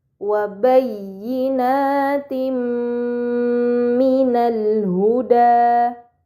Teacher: Ini dinamakan idgham bighunah. Maka kasrahtain dibaca secara melebur dengan gunah yang dipanjangkan